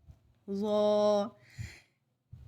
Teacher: ظا کو ادا کرتے ہوئے زا کی آواز نہیں آئے گی